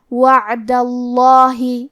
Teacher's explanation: کیونکہ دال پہ زبر ہے لہذا ہمیں لفظ الجلالہ مطلب کلمت اللہ کے لام کو موٹی آواز میں پڑھنا ہے